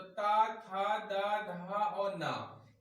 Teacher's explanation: अगर इसको हम ध्यान दें तो ता, था, दा, धा और ना, ये जो है ता वर्ग के अंतर्गत आते हैं। इन व्यंजन का या इन वर्णों का उच्चारण स्थान हम देखें तो दंत है